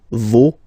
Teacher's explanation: even if you've got this final s, you don't pronounce it